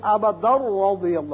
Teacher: تنوین را سے ملے گی، ادغام بغیر غنہ ہوگا